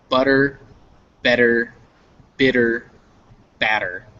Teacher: in English, these double T's and these double D's become a sound that is a tap